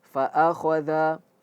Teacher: kho itu tebal, dia huruf huruf istila, tebal